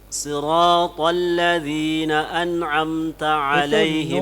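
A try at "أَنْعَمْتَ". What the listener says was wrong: Itu nun mim tawassutnya. Tawassutkan. An'amta. Ya, lepaskan sedikit suara. Ya, tambahlah sedikit temponya.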